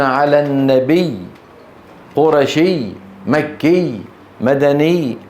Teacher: فكان العرب بفطرتهم يقفون بالضغط على هذه الياءات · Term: الوقف على المشدد